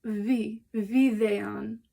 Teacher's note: So it kind of sounds a little bit like a V, or maybe W, but it's really like, it's a voiced bilabial fricative